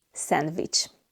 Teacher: And the letters C and S make the ch sound. And we have the V sound instead of W. Sandwich. The W sound does not exist in Hungarian.